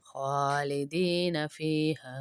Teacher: خا کو اس لیے کھینچ رہے ہیں کھڑا زبر ہے، اور فیہا کو اس لیے کھینچ رہے ہیں الف مدہ ہے ہا کے ساتھ.